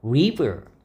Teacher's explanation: 이 R은 혀가 입천장에 조금도 닿지 않아야 됩니다.